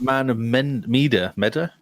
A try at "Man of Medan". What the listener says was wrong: Medan. There's an N at the end of that. Medan. Man of Medan.